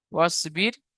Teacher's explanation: কেন বারিক হবে? র সেখানে পূর্বে জের এসেছে তাই র বারিক হবে